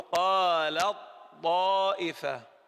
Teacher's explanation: أنا لا أنطق التاء، أبدأ بالطاء مباشرة، أقول قالت طائفة. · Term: إدغام متجانسين صغير